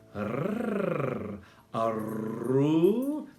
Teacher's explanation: That's a rolled R in Spanish.